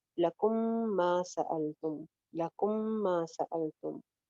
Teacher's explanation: लकुम मीम के बाद मीम, यहाँ पे फिर इदगाम हो रहा है